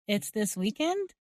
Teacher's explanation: Instead, here we are using the same word order, but adding rising intonation to clarify we heard correctly